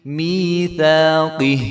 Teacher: میم کے آگے جو یا ہے یہ بھی یا مدہ ہے، تو میثاقہ، تا کے آگے جو الف ہے وہ پڑھا جائے گا، اس کو 1 الف کے برابر ہم لمبا کریں گے